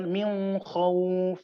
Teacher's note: Contohnya ketika membaca min khauf, ada yang membacanya min khauf dengan menyamarkan huruf nun sukun